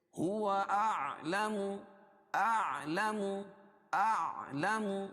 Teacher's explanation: حمزہ اور عین دونوں کو الگ الگ کر کے پڑھیں گے